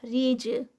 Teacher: جیم جو ہے وہ قطب جد کا لیٹر اور یہاں پر سٹاپ ہے تو اس لیے یہاں پر قلقلہ ہوگا